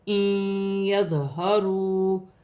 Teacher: ان یظہروا ہا سینے والی ہا ہے, واو ساکن سے پہلے پیش ہے تو واو مدہ بنے گی, 1 الف کی مقدار کھینچ کر پڑھا جائے گا